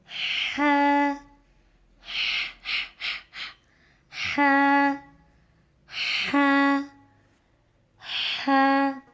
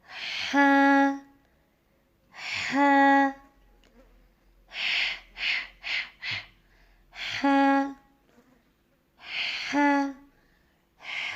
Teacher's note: ح کی ادائیگی حلق کے درمیانی حصے سے ادا ہوتا ہے.